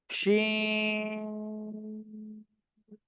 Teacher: জিহ্বার মাঝখান তার বরাবর উপরে তালুর সঙ্গে লাগিয়ে শা শা শব্দ করে উচ্চারিত হবে